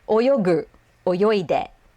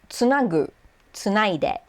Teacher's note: You're changing the voiceless consonant of k to g, and then the voiceless consonant of t to d.